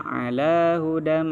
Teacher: tanwin disambut mim, hukumnya idgham begunnah, dan itu harus berdengung